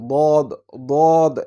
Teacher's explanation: জিহুব্বার গোড়ার কিনারা উপরের মাড়ির দাঁতের সঙ্গে দ এরকম উচ্চারণ হয়